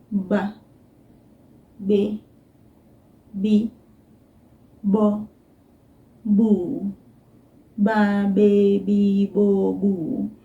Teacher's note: my lips come close to each other close them and then I let go it's almost just just a little flutter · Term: soft